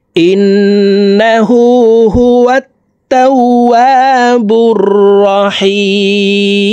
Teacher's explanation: 3 আলিফ টেনে মিমকে সাকিন করতে হবে কারণ মদের হরফের বামের হরফে ওয়াকফ হইলে মদ্দা আরজি 3 আলিফ টেনিয়া পড়িতে হয়